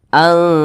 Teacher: Nah, jadi nun sukun berjumpa dengan huruf ta hukumnya ikhfa hakiki aqrab. Cara bacanya disamarkan, kemudian dia didengungkan.